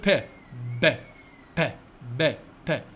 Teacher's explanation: الهواء يتوقف عند الشفتين